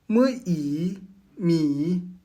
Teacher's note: Le M est une nasale bilabiale. Les lèvres sont fermées, exactement comme pour le M français de maman.